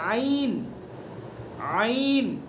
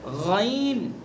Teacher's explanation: عین وسط حلق غین ادنی حلق